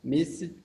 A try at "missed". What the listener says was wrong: Missed. No. Missed. No. Oh, you pronounce like this. Missed. Only missed. You don't pronounce the E. We talked about this in the pronunciation of the past tense of regular verbs. S-E-D, you pronounce S-T. Missed.